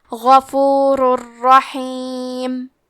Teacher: کلمت رحیم میں ہا کی ادائیگی حلق کے درمیان والے حصے سے ہے۔